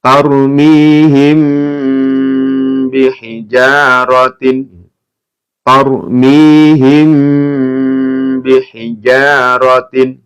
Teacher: Jadi ada mim sukun bertemu dengan ba. Ya, ini namanya ikhfa syafawi. Ya, maka dibaca mendengung dan ditahan.